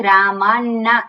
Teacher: રામાણાસ્મિત રામાણા નથી, રામાન્ના ડબલ ન છે